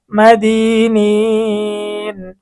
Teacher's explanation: মদের হরফের পরে অক্ফ করার কারণে মধ্যে আরজি 3 আলিফ টেনে পড়তে হবে